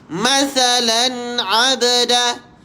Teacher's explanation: tanwin ini diperjelaskan kerana di sini jatuhnya hukum izhar halqi